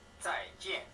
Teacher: both sounds are fourth tone.